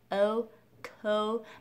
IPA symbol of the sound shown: oʊ